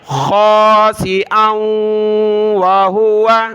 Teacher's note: حمزہ کو آگے واو کے ساتھ ملایا